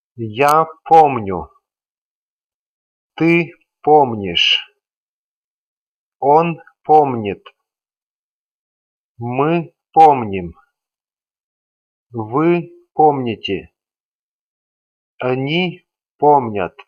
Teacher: As usual, the stem doesn't change throughout the pattern. And as the ending of they form is unstressed, all the other endings are also unstressed.